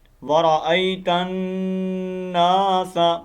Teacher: اب یہاں پر غنہ کرنا ہے، ادغام، ٹھیک ہے، نون مشدد کا غنہ